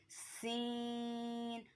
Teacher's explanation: ये सीटी वाला है, ये ज़बान की नोक और दोनों दांतों के अंदरूनी किनारे से अदा होगा। सीन, हमारी जो ज़बान की नोक है वो नीचे वाले दांतों की जड़ में जाके अंदरूनी किनारे में जाके टच हो रही है।